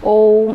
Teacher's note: प्लुप्त स्वर के उच्चारण में दीर्घ स्वर से भी अधिक समय लगता है